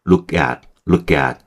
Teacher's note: K를 뒤에 있는 A가 당겨서 발음하는 거예요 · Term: 연음